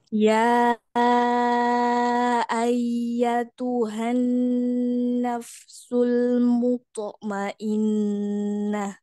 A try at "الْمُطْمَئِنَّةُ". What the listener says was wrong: Muto, muto, sama kayak dal tadi, cuman ini tebal. Ya, kurang tenang lam sukunnya Umi lagi. Nafsul mutmainnah.